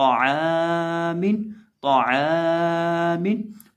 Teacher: ये जो आइन है इसको हम बीच हलक से हलक के दरमियान से अदा करेंगे और इसको हम खींचेंगे, एक अलिफ के बराबर खींचेंगे, क्योंकि इसके साथ अलिफ मद्दा है।